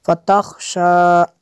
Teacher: غائن نہیں پڑھ سکتی، اس کو خا کے ساتھ پڑھیں گے